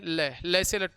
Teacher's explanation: हैं ल ल से लट्टू वाले का उच्चारण करते हैं तो जीवा के दोनों भाग से वायु बाहर निकलती है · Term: पार्श्विक व्यंजन